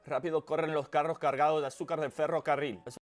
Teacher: Y también estoy nasalizando un poquito las vocales antes de N y M.